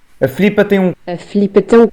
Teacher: Na Madeira e nos Açores, para além de cortarem o i, ainda voltam a alterar o som do L